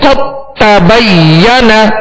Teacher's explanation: دال کو تا میں داخل کر دیا، دال کو تا میں داخل کر دیا. اب دال کی کوئی صفت باقی نہیں رہے گی، دال نہیں پڑھیں گے بلکہ تا ہی پڑھیں گے. قد تبین یہ ادغام بھی ہے مگر یہ ادغام تام کہلاتا ہے.